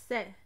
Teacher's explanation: the tip of my tongue is coming ever so slightly in contact with the back of my teeth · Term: soft S